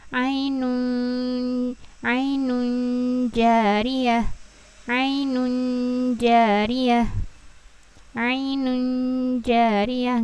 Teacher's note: nggak jelas nunnya gitu. Jadi dia samar ya. Masuk ke jimnya juga.